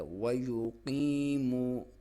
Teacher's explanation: واو کو آپ نے ہونٹوں کو گول کر کے پڑھیں گے تو صحیح ادائیگی ہوگی. ہم موسٹلی ویسے پڑھ دیتے ہیں ویوقیمو کر دیتے ہیں، یہ غلط ہے.